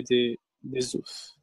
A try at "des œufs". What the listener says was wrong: Les œufs. Des œufs. Le F, on ne le prononce pas.